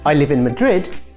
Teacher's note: The intonation is a little bit strange. Yes, he used the rising intonation to end his sentence, and that is wrong